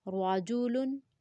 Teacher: روا کو پر پڑھیں گے کیونکہ زبر ہے